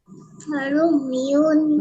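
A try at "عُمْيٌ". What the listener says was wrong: রুম না আইন আমার ঠান্ডা লেগে গলা বসে গেছে তো এজন্য কণ্ঠ খারাপ হয়ে গেছে উময়ুন আইন উময়ুন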